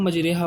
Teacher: زبر کو زیر اور الف کو یا کی طرح مائل کر کے اس میں ہم پڑھتے ہیں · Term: امالہ